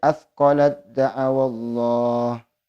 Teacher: dibaca dengan idgham secara sempurna dengan memasukkan ta kepada dal secara sempurna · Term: idgham mutajanisain kamil